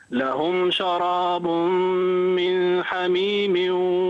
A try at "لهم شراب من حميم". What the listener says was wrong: أظهر النون.